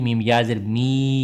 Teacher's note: یا مدہ ایک الف کے برابر لمبا ہوگا